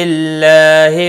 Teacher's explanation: اللہ کا لام زیر کی وجہ سے باریک ہوگا